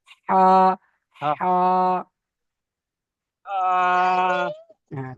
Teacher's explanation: এই হাটা গলার ভেতর থেকে একটু হবে